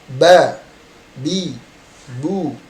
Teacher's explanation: Dia dibacanya jernih, tidak ada hempasan.